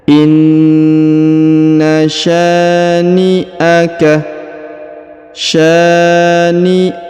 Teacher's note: huruf Sya dibaca panjang dua harakat karena di depannya terdapat Alif